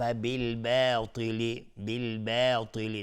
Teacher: با رو یعنی الف رو غلیظ تلفظ نمیکنیم، چون با از حروف استفهام است، از حروف ترقیق است، نازک تلفظ میشه و الف هم تابع باست.